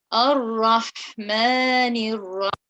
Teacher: So for the ha, you let the air come through from the middle of your throat.